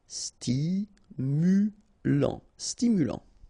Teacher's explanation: final t not pronounced